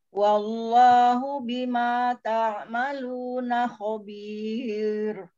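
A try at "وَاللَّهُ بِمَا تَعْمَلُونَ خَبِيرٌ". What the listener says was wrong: Umi, jangan nanggung lafadz Allahnya. Wallahu, tempel buka mulutnya.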